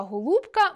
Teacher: У слові “голубка” “о” наближається до “у”, оскільки стоїть у складі перед наголошеним “у”: [г оу л у б к а].